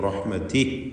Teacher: റഹ്മതിഹി എന്നിടത്ത് വഖഫ് ചെയ്യുമ്പോൾ ഹായിന് സുക്കൂൻ നൽകി റഹ്മതി എന്നാണ് വഖഫ് ചെയ്യുക.